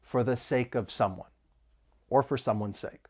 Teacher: the word for is often reduced it's unstressed therefore the vowel sound may change and it's going to sound a little more like fur and then we can link the phrase sake of and it's · it's going to sound a little more like fur and then we can link the phrase sake of and it's like we're moving that consonant sound over